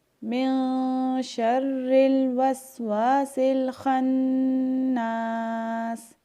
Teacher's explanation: اب یہاں پہ خا کو ہم نے پر پڑھنا ہے کیونکہ یہ حروف مستعلیہ میں سے ہے، یعنی کہ موٹے حروف میں سے ہے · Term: خا کو پر